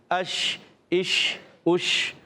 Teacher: تو یہ منہ میں آواز پھیلتی ہے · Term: تفشی